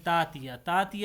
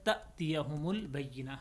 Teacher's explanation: اکثر لوگ تأتیہ کو پڑھتے ہیں تاتیہ، تاتیہ یہ لفظ نہیں ہے، تأتیہم البینہ، حمزہ کو تھوڑا جھٹکے کے ساتھ پڑھا جاتا ہے